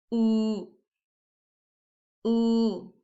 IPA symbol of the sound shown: u: